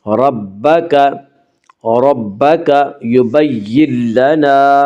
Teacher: یبین لنا میں ادغام بلا غنہ ہوگا۔